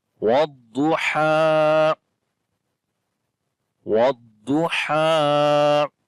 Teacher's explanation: Waw we connect with the dad directly, and dad we read in heavy sound. There is isti'la letter.